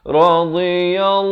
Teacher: lafzul jalalah dibaca tebal, jangan baca nipis